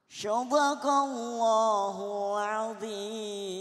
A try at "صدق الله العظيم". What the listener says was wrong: Bagus suaramu, tapi sodako pakai sod. Sodakallah. Sodakallahul azim. Kalau itu pakai huruf sod, sadaqallahul azim.